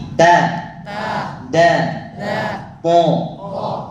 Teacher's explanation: Nyentuh pangkal gigi. Lidah bagian atas nyentuh gusi, lidah bagian bawah nyentuh gigi.